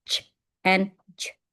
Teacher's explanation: next is affricate. It means stop and fricative